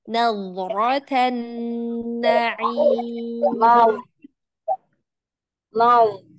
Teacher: Tampakkan istitolahnya pada huruf dad.